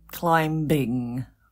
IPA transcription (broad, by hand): ˈklaɪmbɪŋ